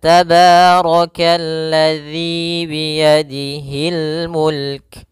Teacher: di sini ada mad thabi'i yaitu kasrah bertemu ya panjangnya dua harakat.